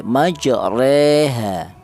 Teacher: Jadi tidak terlalu fathah juga tidak terlalu kasroh. Bukan ro juga bukan ri tapi re, majreha. Itu imalah.